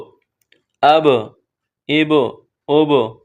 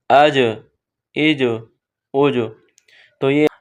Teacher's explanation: اس میں آواز مخرج میں رکے گی نہیں بلکہ پلٹ کر واپس آئے گی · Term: حروف قلقلہ